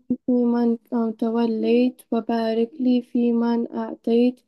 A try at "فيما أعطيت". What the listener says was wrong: في ما, it's not man.